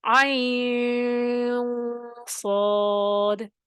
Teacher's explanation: نون ساکن کے بعد صاد پڑھتے ہوئے اخفا بھی کرنا ہے، آواز کو ناک میں چھپانا ہے